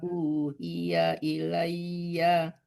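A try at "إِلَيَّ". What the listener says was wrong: Nggak pakai ya, ilai. Dimatikan ya-nya ya. Kalau nggak panjang ya-nya itu dimatikan ya. Kalau kita berhenti, hurufnya tidak panjang dimatikan.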